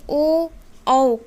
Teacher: ओ और औ का उच्चारण स्थान कंठ और ओष्ठ ये दोनों होते हैं